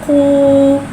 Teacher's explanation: क़ाफ के ऊपर उल्टा पेश को एक अलिफ यानी 2 हरकत के बराबर खींच के पढ़ेंगे और उल्टे पेश को होठों की गुलाई के साथ अदा करके पढ़ेंगे।